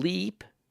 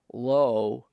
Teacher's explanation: saying leap would be forward low would be back a front position tends to reduce the volume of the oral